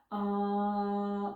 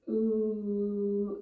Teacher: we begin with the mouth wide open with this ah, and then we begin to slightly close the mouth and it becomes ooh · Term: Om chant